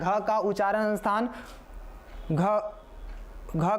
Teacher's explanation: ग का उच्चारण स्थान कंठ होता है